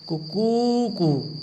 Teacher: कुकू कू इसमें जो ध्वनि है वो क्रमशः ह्रस्व दीर्घ और प्लुत का विधान करती है, प्लुत का ज्ञान करवाती है।